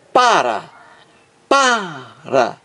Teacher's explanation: Então aqui na palavra para, existe acento tônico, que é o mais forte, é o som mais forte, na primeira sílaba.